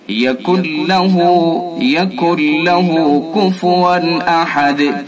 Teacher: ادغام تام یعنی مکمل پورا ادغام کر دیں گے، نون کی اس کے اندر آواز بھی نہیں آئے گی۔